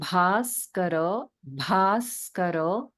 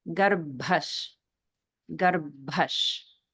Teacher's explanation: just notice the Maha Prana in basar basar